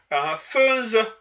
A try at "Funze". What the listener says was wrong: Funze, peut-être. Il n'y a pas le coup de glotte. Il n'y a pas de coup de glotte. Funze.